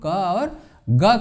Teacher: جب زبان کا پچھلا حصہ نرم تالو سے رابطہ قائم کرتا ہے تو وہ غشائی آوازیں ہوتی ہیں، یعنی جس کو ہم ک اور گ کہتے ہیں، اس کے لیے کاف اور گاف کا استعمال کرتے ہیں۔